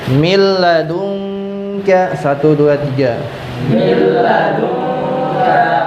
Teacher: Nah, karena di sini terjadi idag bilagunah terjadi dari huruf nun bertemu dengan huruf lam, maka suara nun mati dimasukkan ke huruf lam. Min menjadi mil, min. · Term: idgham bila gunah